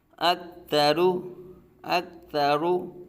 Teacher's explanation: را کو پر پڑھا جائے گا، را پر پیش ہو، را کو پر